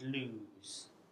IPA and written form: luːz (lose)